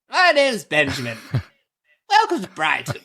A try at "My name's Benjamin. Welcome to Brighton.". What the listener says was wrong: No. Now you're doing Cockney accent. You have to do the Queen's English.